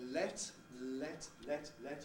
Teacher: you hear that l is fairly clear